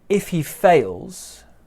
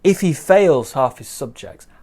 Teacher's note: small stress on if big stress on fails